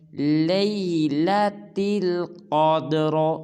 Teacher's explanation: اس حرف میں ہم قاف کو پر ادا کریں گے، قاف کے بعد جو دال ساکن ہے اس کو قلقلہ کریں گے، اور دال ساکن کے بعد جو را ہے اس کو بھی پر ادا کریں گے۔